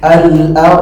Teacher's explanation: Nah, roh juga tebal. Kenapa? Sebelumnya apa? Fathah.